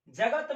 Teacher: ज और त के तुलना में दोस्तों ग पर अधिक बल है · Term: बलाघात